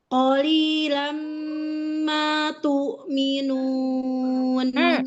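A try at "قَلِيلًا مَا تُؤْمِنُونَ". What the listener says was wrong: Qafnya. Qalilam ma tu'minun. Tu'minun itunya dijelaskan ya hamzahnya. Tu'minun.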